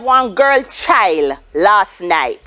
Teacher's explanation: we notice that the d at the end drops off it's devoiced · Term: devoiced consonant clusters